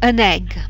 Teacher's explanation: an egg is run together so that it sounds like one word